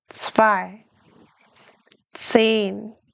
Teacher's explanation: it sounds like a TS at the beginning. Z. zwei two zehn Practice saying them.